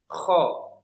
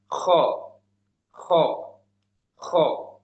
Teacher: tidak terlalu diokan tidak juga terlalu di A kan antara kedua itu